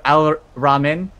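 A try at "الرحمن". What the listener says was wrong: You see the H, bitch! Pronounce the H! Rahman!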